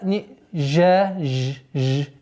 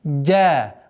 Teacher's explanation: не жа, ж, ж, или джа, джа, а резкое произношение джим.